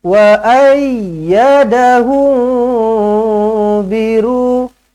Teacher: Mim kosong bertemu dengan ba, ikhfa syafawi, dengungkan 2 harakat.